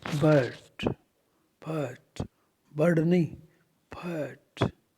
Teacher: आर को न बोलते हुए साइलेंट करते हुए